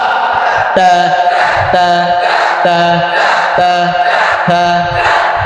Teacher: জিহ্বার আগা দাঁতের উপর তা, পাতলা তা